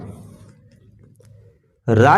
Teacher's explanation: अब देखिए, रा और ला। रा जब बोला जाता है तो जीभ ऊपर तालू से टकराती है और लुढ़क कर नीचे आती है। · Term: लुंठित व्यंजन